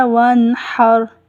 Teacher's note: نون کے اوپر ہم نے غنہ نہیں کرنا، جلدی سے ادا کرنا ہے، وانحر، اور ہا کو اچھی طرح سے ادا کریں، وانحر۔